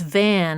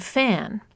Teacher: each word begins with a labia dental fricative in Van the fricative is voiced and in fan it's voiceless